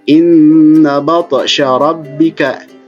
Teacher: tapi to-nya harus dipantulkan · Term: qalqalah